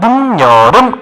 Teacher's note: 발음이 늦여름 이렇게 돼버렸네. 디귿과 니은이 만나서 니은이 됐죠. 이런 거 같은 경우 우리가 뭐라 하냐면 니은, 이게 콧소리였죠. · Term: 비음화 현상